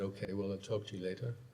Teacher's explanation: i speak with quite a rising intonation